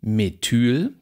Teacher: Da haben wir ein kurzes, gespanntes E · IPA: [me.ˈtyːl]